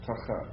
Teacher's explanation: emphasis on the first syllable, but yeah, tachat.